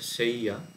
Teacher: এটাকে সেজ্জা উচ্চারণ না করলেই ভালো, মানে বাংলার মতো অন্তস্থ জ না করে অন্তস্থ হিসেবে ধরতে হবে